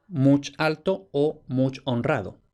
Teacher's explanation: en posición átona, sin acento, delante de otra palabra, la O final se apocopaba, se perdía